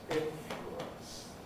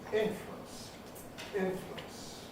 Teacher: We can say influence with 3 syllables, influence. Or we can say influence, influence with 2 syllables.